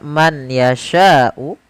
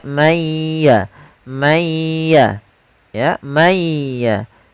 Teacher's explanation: Contoh, misalkan ada nun sukun bertemu dengan huruf ya, maka nunnya dimasukkan kepada huruf ya, tidak lagi dibaca man yasha'u, akan tetapi suara nunnya dihilangkan sebagian, tapi masih menyisakan sedikit huruf nunnya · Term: idgham bi gunnah